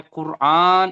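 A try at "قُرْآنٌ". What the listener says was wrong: না, কুরআন নুন, নুন দু পেশ নুন বলেছেন, তাহলে নুন দু পেশ নুন, নুনটি বলতে হবে কুরআন নুন।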